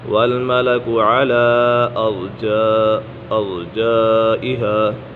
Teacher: یہاں پر مد منفصل ہے اور پھر مدہ کے بعد ہمزہ دوسری کلمہ ہے تو اسی وجہ سے مد منفصل ہوگا۔